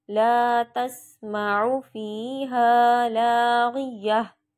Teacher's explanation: इसमें भी यह हा की आवाज़ निकालूंगी और जज़म लगा के वक्फ कर दूंगी